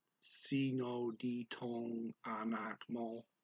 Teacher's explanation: The words dito and ang are blended together by the speaker.